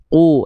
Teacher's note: qu dia enggak keluar percikan nafas. Ku dia enggak keluar nafas sedikit pun. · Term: jahr